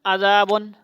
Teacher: عین کی جگہ حمزہ نہیں پڑھنا